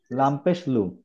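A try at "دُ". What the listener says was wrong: ওকে, এটা দাল। লাম হতে হলে আর একটু লম্বা হতে হতো। দাল পেশ দু।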